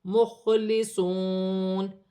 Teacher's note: پیش ایک الف کی مقدار کھینچ کر پڑھا جائے گا، مخلصون، خا حروف حلقی میں سے ہے، ساکن ہے، حلق سے ادا کیا جائے گا